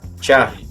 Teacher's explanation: Você não vai falar Charlie ou Charles, como eu já escutei por aí na fonia. Você vai pronunciar Charlie, como se tivesse um T na frente.